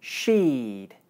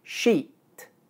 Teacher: vowel is long because it's followed by the voiced consonant sound, d, while in sheet, the vowel is short because it's followed by the unvoiced consonant sound, t.